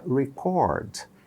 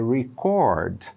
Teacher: A tônica não é mais a primeira sílaba. Entre barras é a segunda. Você vai clicar no US, United States, e vai ver que é record.